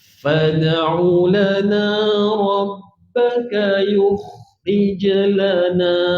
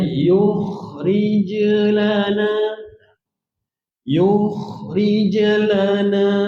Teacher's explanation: jim ni qalqalah jadi cepat. Jangan yukhrij lana.